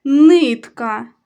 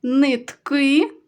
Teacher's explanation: нитка перший склад наголошений нитки наголошений другий склад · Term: наголос